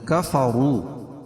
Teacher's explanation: کفروا واو مدہ ہے واو ساکن سے پہلے پیش ہو تو واو مدہ ہوتا اس کو ایک الف کے برابر کھینچ کے پڑھیں گے اور وا کے اوپر پیش ہے تو وا کو پور پڑھیں